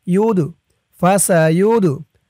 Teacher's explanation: এই দালটি কলকলার হরফ, ধাক্কা দিয়ে পড়তে হবে